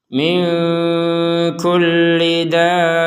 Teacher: Jadi dipanjangkan 6 harokat dulu, baru setelah itu kepada tekanannya. Jadi 6 harokat baru ditekan ke ba.